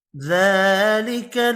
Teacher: ذلك کھڑی زبر ہے، 1 الف کی مقدار میں کھینچ کر پڑھیں گے